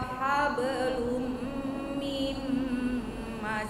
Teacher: mimnya tidak diayun tapi langsung nempel